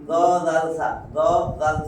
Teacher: জিহ্বার আগা উপরের দাঁতে আগায় লাগাইয়া পড়তে হবে